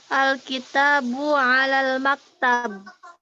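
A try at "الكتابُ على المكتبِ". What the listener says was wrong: Baca sampai habis alal maktabi.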